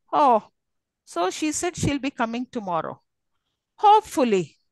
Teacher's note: it'll fall then rise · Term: fall rise